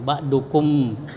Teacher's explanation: mim disuarakan dengan terang dan jelas di bibir serta mulut tertutup. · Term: izhar syafawi